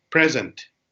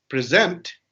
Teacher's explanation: when the first syllable is stressed then it's a noun like a gift